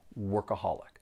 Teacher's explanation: There are four syllables and the stress is on that third syllable.